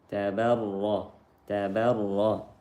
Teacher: Tasdid ra dan ra-nya dibaca tebal